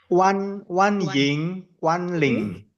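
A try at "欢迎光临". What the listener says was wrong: Nah, itu. Huan Lin, bukan Ling, tapi Lin.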